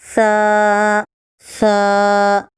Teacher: زبان کی نوک کو اوپر کے درمیانی 2 دانتوں کے کنارے کو اس طرح لگائیں کہ زبان کی نوک ذرا سی باہر نکل آئے تو سا نکلتا ہے